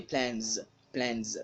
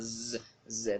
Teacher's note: The plural marker here is s, and it's pronounced as z.